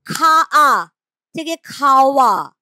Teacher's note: দেখো খা আ থেকে খাওয়া, খা আ কিন্তু উচ্চারণ করাটা কঠিন হবে না উচ্চারণ, খা আ, তার থেকে খাওয়া। এই যে ওয়া চলে এলো মাঝখানে, ছিল খা আ, হয়ে গেল খাওয়া। এই যে ও আ, এটাই হয়ে যাচ্ছে ওয়া শ্রুতি।